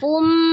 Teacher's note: Perhatikan ketika fu maju fu tanwinnya berubah menjadi mim. Tanwin ketemu dengan mim diidghamkan ke mim ya, idgham bi gunnah.